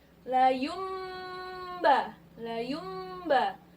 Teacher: nun mati bertemu ba hukumnya iqlab iqlab hai nun mati bertemu ba hukumnya iqlab jadi bunyinya layum nun nya berubah bunyinya menjadi mm layu mba layu mba nunya berubah nih bunyinya bukan non lagi